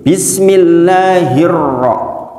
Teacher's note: Di sini ada namanya alif lam samsiyah. Alif lam samsiyah artinya alif lam yang enggak dibaca, langsung masuk ke ro.